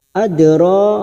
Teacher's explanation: Dal sukun qalqala sugro Karena Mati asli di tengah kalimat Jangan lupa kita pantulkan